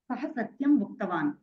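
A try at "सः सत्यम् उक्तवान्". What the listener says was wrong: సమ్యక్.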